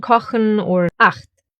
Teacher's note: First one is after the vowels A, O, and U. It sounds harsher and is formed more in the throat.